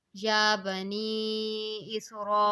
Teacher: مثلاً یا بنی اسرائیل، یہاں یا بنی پر چھوٹی مد ہے اس لیے اسے 3 الف مقدار اور را پر بڑی مد ہے اس لیے اس کو 5 سے 7 الف مقدار تک کھینچا جاتا ہے